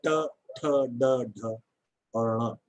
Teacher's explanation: Tongue is rolled back, और वो touch करती है आपके पूर्व तालव्य से, आपके प्री पैलेटल स्थान से, कठोर तालु से टकराती है, ट ठ ड ढ और ण। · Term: मूर्धन्य